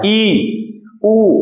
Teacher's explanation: तो ई ऊ जो हो गए वो हो गए संव्रत, लगभग ना के बराबर खुलता है मुंह